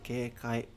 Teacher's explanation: this word keikai, it's like completely straight after the first one. So that means it has no accent. So you just say keikai, completely normal.